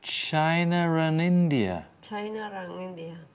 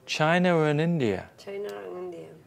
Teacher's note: An R sound, even if there is no letter R in the spelling. That is called an intrusive R.